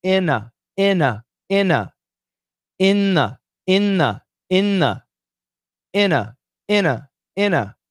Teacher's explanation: The N. In every situation, it's the N, the powerful N, killing the D, T, and TH.